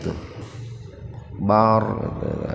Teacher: ra sukun didahului fathah tafhim itu jadi rnya dibaca tebal